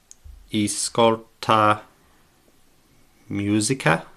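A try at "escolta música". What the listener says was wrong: Ascolta. It's a little bit more like a that weird like that neutral e sound. Ascolta musica.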